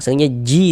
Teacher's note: Ada huruf ya sukun sebelumnya harakat kasrah. Maka huruf yang memiliki harakat kasrahnya dibaca panjang.